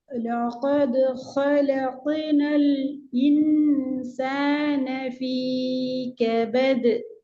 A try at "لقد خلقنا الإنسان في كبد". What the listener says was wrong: ஃபீ நீட்டத்தை குறைங்கோ ஃபீ கபது